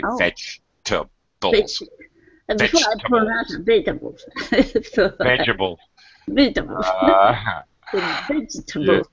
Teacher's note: Americans pretty much drop that second syllable we say veget vegetabl vegetable veg vegetable yeah that's American pronunciation